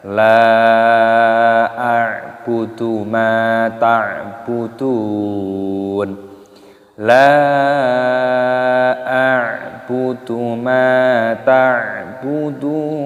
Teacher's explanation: Lam dipanjangkan, mad jaiz munfasil dipanjangkan 5 ketukan. A'budu, ainnya sukun dibaca a'.